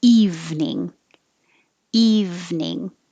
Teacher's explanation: has just two syllables it looks like three but we don't say the middle e